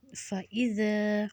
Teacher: ذا کو ہم نے نرمی سے ادا کرنا ہے سیٹی کے بغیر